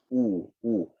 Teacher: muncungkan bibir dengan ada ruang di tengah-tengah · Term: bunyi U